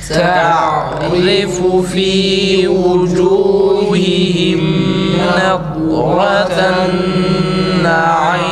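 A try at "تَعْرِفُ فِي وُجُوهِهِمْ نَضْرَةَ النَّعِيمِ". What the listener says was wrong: Naim değil. İ değil arkadaşlar. İyi çıksın.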